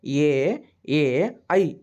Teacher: ಕಂಠ ಮತ್ತು ತಾಲವ್ಯ ಎರಡರ ಮೂಲಕನು ಉಚ್ಚಾರ ಆಗುತ್ತವೆ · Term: ಕಂಠ ತಾಲವ್ಯ